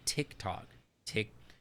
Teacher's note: you do the Canadian thing of pronouncing the harder T